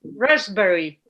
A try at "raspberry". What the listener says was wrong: You say that very well, except for one thing. Guess what the one thing is? dropping your jaw on the ass sound. Raspberry. Raspberry. Raspberry.